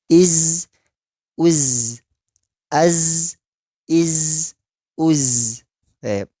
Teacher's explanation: keluarnya suara tanpa diiringi nafas. Dan yang ketiga, yang perlu diperhatikan, zai itu si tipis, karakternya tipis. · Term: huruf zai